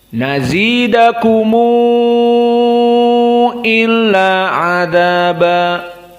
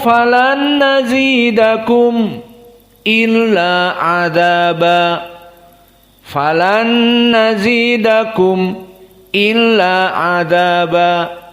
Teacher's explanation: Mim sakinah di sini dijadikan silatul mausul, jadi kumu. Dan di sini dibaca dengan al-isba dikarenakan bertemu dengan hamzah untuk persiapan masuk kepada makhraj hamzah. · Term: mim al-jama' dengan al-isba'